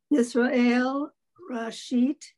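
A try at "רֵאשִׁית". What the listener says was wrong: Reshit. There's two dots.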